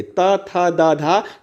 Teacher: अब अगर हम लोग ता का उच्चारण करेंगे, ता, था, दा, धा, तो इसमें हम लोग देखेंगे जो हमारी जीभ है वह जो है दांत को टच कर रही है, दांत को टच कर रही है, इसीलिए इसको दोस्तों दंत उच्चारण स्थान पर रखा गया है।